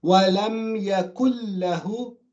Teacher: the noon is completely gone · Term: idgham kamil